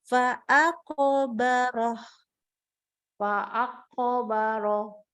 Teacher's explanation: Bagus, tapi qafnya harus ada keluar dong qalqalahnya.